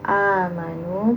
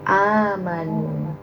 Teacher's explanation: Pengucapan Hamzah ya berbeda dengan pengucapan ain. Jadi ibu lebih syiddah lagi, lebih kuat lagi ngucapnya.